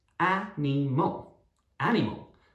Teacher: the stress is at the start on the A